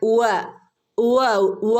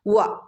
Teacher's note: ചുണ്ടിനെ വട്ടത്തിൽ സർക്കിളാക്കി കൊണ്ടുവേണം ഉവ ഉവ ഉവ പറയാനായിട്ട് കേട്ടോ